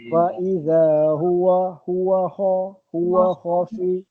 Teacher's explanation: Huruf kha tu sebab huruf halqum. Dia ke dalam.